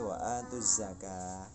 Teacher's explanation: bukan wa atul zakat tapi wa atuz zakah, lamnya menjadi hilang